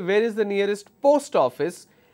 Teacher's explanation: when I use the word post, my tone went up.